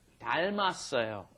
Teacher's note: The 닮다 becomes 닮았어요 because that last, that final M moves up in front of the next vowel, right? That iung has no sound because it's just holding the space in front of the vowel.